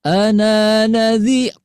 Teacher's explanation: Nadhirnya Ibunda lepas naik ya.